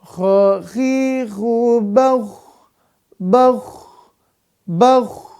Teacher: Maka kho ini adalah suaranya mengalir sempurna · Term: rokhoah